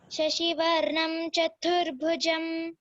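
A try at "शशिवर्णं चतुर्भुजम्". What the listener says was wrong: Chaturbhujam. Shashivarnam Chaturbhujam. Again, bha you have to stress, okay? Okay, in these 4 places, there is Mahaprana. We have to stress. They are all aspirated.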